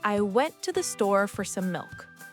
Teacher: I stressed went, store, and milk.